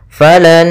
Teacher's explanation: Ya, idgham yang disertai dengan gunnah. Maka cara membacanya nun yang pertama masuk kedua sambil ditahan gunnahnya. Maka falan, tidak langsung falan nazi tapi tahan dulu. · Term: idgham ma'al gunnah